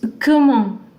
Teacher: Last consonants are not pronounced in most cases in French, so this T is not pronounced.